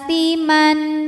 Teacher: cara bacanya panjang a-nya ini dua harakat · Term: mad badal